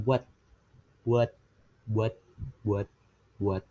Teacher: pada kata buat ini fonem T itu terhalang atau terhambat